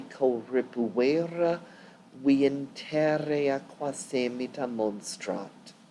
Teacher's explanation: Be sure to be careful of the elision here between viam and, I'm getting a laser pointer. There's an elision here between viam and interea.